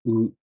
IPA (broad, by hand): ɯ